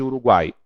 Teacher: U é a semivogal, A é a vogal, I é a semivogal. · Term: tritongos orais